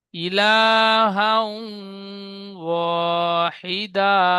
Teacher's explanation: হার উপরে দুজাবার এসেছে, দুজাবারটি তানবিন, তানবিনের পরে ইউ মিনের, আবার এই ইউ মিনে ফিরে যাচ্ছি, তানবিনের পরে ইউ মিনের 4টি অক্ষরের মধ্যে ওয়াও এসেছে, তাই তানবিনের আওয়াজকে এক আলিফ পরিমাণ গুণনা করে পড়তে হয়, একে ঈদগামে নাকিস বলে।